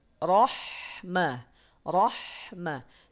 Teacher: Pada saat mengucapkan huruf ro bunyinya tebal dan pada saat mengucapkan huruf ha bunyinya tipis